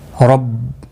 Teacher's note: نون ساکن کے بعد یرملون کا را آیا ہے۔ رب، را پور پڑھا جائے گا زبر کی وجہ سے